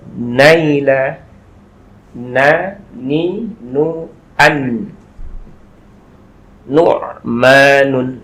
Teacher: nun itu nanti melafadzkannya adalah ujung lidah menempel kepada gusi atas.